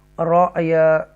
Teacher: یہ یا لین ہے، اور ہم اظہار شفوی ہوگا یہاں پر. رأیا ٹوچ کریں گے، حمزہ ساکن ہے، جھٹکے سے پڑھیں گے